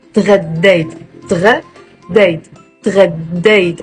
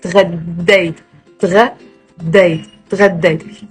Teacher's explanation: And there is a shadda, stress on the dal.